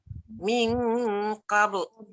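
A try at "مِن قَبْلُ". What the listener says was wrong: Dia jangan qabl. Qabl. Dia bergantung pada nun yang tebal tadi. Min qabl. Lam jangan campur tebal.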